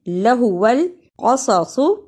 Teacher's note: لہو ال زبر زیر پیش کو جلدی پڑھتے ہیں، لہو القصص، اسے قصصو نہیں پڑھنا، صاد کی جگہ پہ سین کی آواز نہیں آنی چاہیے